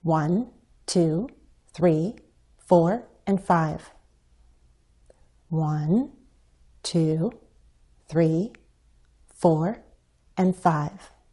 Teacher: we can use a fall rise when we're counting perhaps to sound more certain or more authoritative